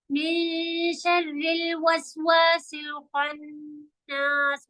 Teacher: खन्नास में खौ हैवी है, नून पे शद्दा खींचेंगे · नून को भी गुन्ना इख्फा करके खींच के पढ़ना है